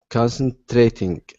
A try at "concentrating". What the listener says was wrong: Okay, that's better. That's better. Good.